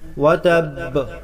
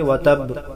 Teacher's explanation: تبت یدا ابی لہب وتب، با مشددہ ہے، وقف میں بھی سختی کے ساتھ پڑھیں گے، اور مشدد حرف پر جب وقف کرتے ہیں تو وقف کے حالات میں بھی دیر دو حرفوں کی لگے گی. تبت یدا ابی لہب وتب، اگر یہاں اس طرح پڑھیں گے وتب تو یہ با ساکن ہو جائے گا اور ایک حرف کی کمی لازم آئے گی جو لحنی جلی ہے، تو اس کے خیال رہے مشدد کو وقف میں بھی مشدد ہی پڑھیں گے.